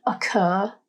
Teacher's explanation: at an example in the word occur there are two syllables the stress or emphasis is placed on the final syllable er it's a harder more dominant sound